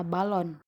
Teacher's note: vokal o Tengah bawah belakang bundar pada kata balon selanjutnya fonem desktop fonem jenis ini merupakan gabungan